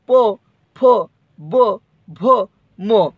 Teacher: पवर्ग का मतलब पो, फो, बो, भो, मो का उच्चारण स्थान ओष्ट